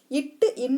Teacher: நாவின் நுனி அன்னத்தின் நுனி. ரெண்டுமே நுனிக்கு வந்துடும். நாவின் நுனியும் வந்துடும், அன்னத்தின் நுனியும் வந்துடும்.